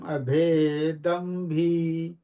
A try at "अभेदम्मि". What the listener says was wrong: अभेदम्मी, भय नहीं, अभेदम्मी।